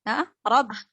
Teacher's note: Roknya tafkhim, tebal karena berharokat Fathah.